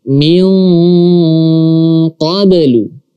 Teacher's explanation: ketika nun mati atau tanwin bertemu dengan huruf qaf, maka kita baca dengan bunyi atau suara nge, ya, sama dengan huruf kaf.